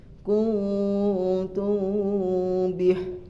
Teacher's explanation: Yang pertama di sini ada ikfa safawi. Ikfa safawi apabila mim sukun bertemu dengan huruf ba, maka ikfa itu disamarkan atau 2 bibir tidak menempel.